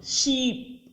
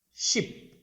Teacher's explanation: ఒకటి మన తెలుగు శబ్దాలలాగే ఈ ఈ, రెండోది లాంగ్ ఈ, ఫస్ట్ది షార్ట్ ఈ.